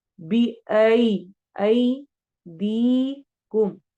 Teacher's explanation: आई में यालीन हो रही है, दी में या मद्दा हो रही है। जब भी या साकिन से पहले फतहा आती है यानी जबर आता है तो लीन होती है, और जब भी या साकिन से पहले कसरा यानी जेर आती है तो या मद्दा होती है।